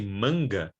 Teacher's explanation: When you say manga, before doing the ga, you have man, and the back of your tongue is touching soft palate